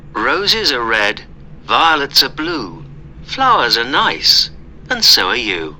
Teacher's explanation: stress was not on are in any of these sentences